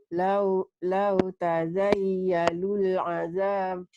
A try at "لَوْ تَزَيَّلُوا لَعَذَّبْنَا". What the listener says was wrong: Enggak. Lau tazayyalu, jangan dilulkan ya. Ini sini nggak ada lamnya hidup nggak ya. Lau tazayyalu la'azabnal.